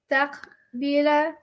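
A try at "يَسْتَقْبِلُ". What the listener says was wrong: So why you say yastaqbila? So why are you saying yastaqbila? Why are you ending it with a? Present tense should end with u. Shouldn't it end with u? You see what you're doing wrong?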